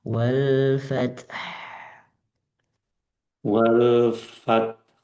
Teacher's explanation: Jadi secara berurutan duluan ta dari ujung gigi disusul dengan angin ha. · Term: Ada dua angin